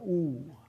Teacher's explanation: oo is a high back rounded vowel